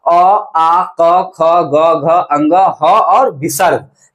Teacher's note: क वर्ग यानी क ख ग घ अंग का, ह का, और विसर्ग का उच्चारण स्थान किससे होता है, हमारा कंठ से बोला जाता है। बोल करके देख लीजिए, नहीं परमाना है तो अ आ क ख ग घ अंग ह और विसर्ग, विसर्ग में कंठ पे जोर पड़ता है, तो कंठ से उच्चारण स्थान ये होता है।